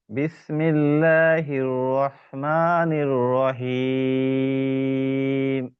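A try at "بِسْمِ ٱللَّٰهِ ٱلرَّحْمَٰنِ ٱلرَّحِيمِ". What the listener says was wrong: রটা ভিতরে মোটা হবে।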